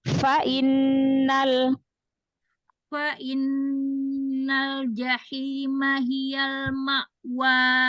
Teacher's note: Tambahkan hamas pada fa-nya, biar enggak terdengar seperti huruf waw.